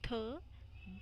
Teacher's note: आप इनको प्रोनाउंस करके देखो, आपकी जो टंग की टिप है, जो टंग की नोक है, वो अपर टीथ के इनर पार्ट में टच होगी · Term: डेंटल साउंड्स